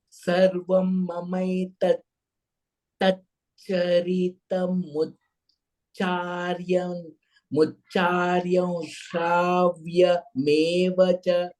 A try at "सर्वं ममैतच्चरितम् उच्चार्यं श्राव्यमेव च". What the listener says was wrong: Don't break the pada.